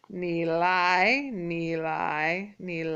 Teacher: the third tone is going to lead into the second tone